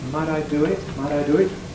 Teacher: Americans voice that tea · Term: voicing or tapping